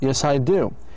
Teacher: it's very important to stress the affirmative verb in the answer